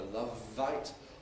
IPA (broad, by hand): ˈlʌv vaɪt